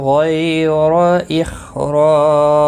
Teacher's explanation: را الف مدہ ہے، ایک الف کے برابر کھینچ کر پڑھیں گے